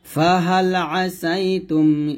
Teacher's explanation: আইনের উচ্চারণ জায়গায় যেন হামজা না হয়ে যায় এটা সতর্ক থাকবেন আইন জবর আ একটু চাপ দিয়ে বলতে হবে